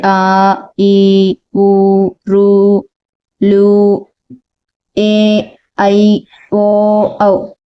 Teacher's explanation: ఇవి రెండు చిటికెల కాలంలో పలుకుతున్నాం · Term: దీర్ఘ అచ్చులు